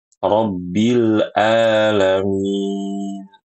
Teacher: pada kata al-alamin, ini huruf ainnya harus jelas. Jangan diubah menjadi hamzah.